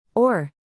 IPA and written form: ɔːr (Ore)